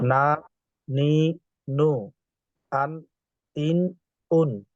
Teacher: জিহ্বার আগা তার বরাবর উপরের তালুর সঙ্গে লাগাইয়া নুন